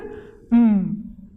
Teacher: the nasal passage is open the oral passages closed so the air passes out through the nose so the soft palate plays a very significant role in helping